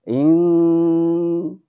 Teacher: ketika membaca dengungnya ikhfa hakiki itu ditahan sampai 2 harokat seperti dengungnya gunah musyaddadah yang pernah kita pelajari di awal-awal ya.